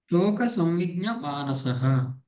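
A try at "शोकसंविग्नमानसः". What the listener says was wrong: సంవిఘ్న, జ్ఞ కాదు, సంవిఘ్న మానస.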